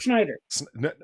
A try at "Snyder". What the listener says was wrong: No, No, it's Snyder. You're putting a CH in there. Schneider and Snyder are two different names.